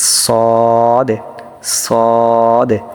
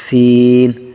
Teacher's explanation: সদ আর সিন একই রকম মনে হবে, কিন্তু উচ্চারণে একটু পার্থক্য আপনার তৈরি করতে হবে। সদটা একটু মোটা হবে, সিনটা একটু পাতলা হবে